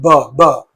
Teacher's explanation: when you say B the vocal cords are vibrating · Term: voiced sound